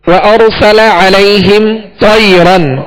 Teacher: تا کو پر پڑھیں گے اس لیے کہ حروف مستعلیہ میں سے ہے